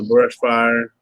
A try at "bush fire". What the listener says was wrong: We say bush. We don't say we don't pronounce the R, so it's bush.